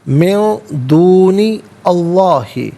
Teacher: من میں نون ساکن ہے، اس کے بعد دونی میں دال حرف اخفا ہے تو نون ساکن کو اخفا کے ساتھ پڑھیں گے۔ اخفا کہتے ہیں ناک میں آواز لے جا کر گنگنانا۔